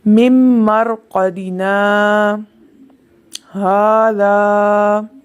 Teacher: मरक़दिना के बाद आवाज़ रुक गई और फिर हाजा की आवाज़ आई, लेकिन सांस जारी रहा